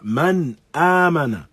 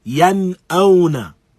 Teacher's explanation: both the noon as-sakin is pronounced clearly and the following letter is pronounced clearly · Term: al-idhar